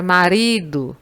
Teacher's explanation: Na palavra marido, a sílaba que você demora mais para pronunciar, ou que você pronuncia com maior intensidade, é o ri. É a penúltima sílaba.